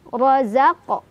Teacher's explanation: Ro-nya dibaca secara tafkhim karena ro berbaris fathah, jadi ditebalkan. Razaq. Ada qalqalah sura karena ada huruf qalqalah yang sukunnya sukun asli, bawaan bahasa Arabnya ya.